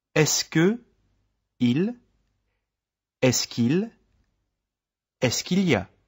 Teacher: notice how Est-ce que which ends in a vowel and the first part of il y a? Il. which begins with a vowel become joined together.